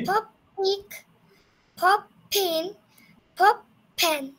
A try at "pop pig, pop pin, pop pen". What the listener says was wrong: এই তো গুড।